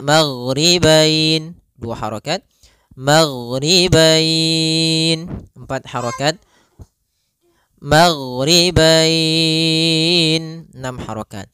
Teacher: Disebabkan karena adanya huruf fathah dan huruf bertemu dengan huruf ya sukun atau waw sukun di akhir bacaan. Panjang untuk mad lin sendiri kita boleh panjangkan 2 harokat, boleh 4 harokat, boleh pula 6 harokat.